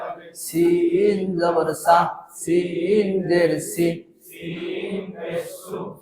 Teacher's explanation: সা সামনের নিচের দাঁতের আগা থেকে শীষ সহ সিন জবর সা সামনের নিচের দাঁতের আগা থেকে শীষ সহ পাতলা ভাবে আদায়